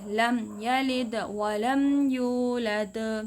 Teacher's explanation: لم میم کی آواز نکالیں گے، آواز کو ناک میں نہیں کھینچیں گے، لم نہیں کریں گے. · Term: اظہار